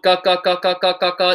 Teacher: If you're going ka ka ka ka ka ka ka, you should feel very minimal of any air hitting your hand. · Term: not aspirated